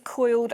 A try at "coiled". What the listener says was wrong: It sounds like you're saying quilled. Coiled. Coiled.